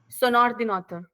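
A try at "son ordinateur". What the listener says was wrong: Sonordinator. Very nice.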